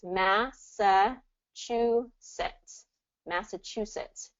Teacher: talking about Massachusetts it's going to be this massetts Massachusetts Che third syllable stress on this chusetts · Chew, third syllable stress on this, Chusets.